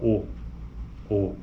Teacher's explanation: veja que existe o arredondamento então é uma vogal arredondada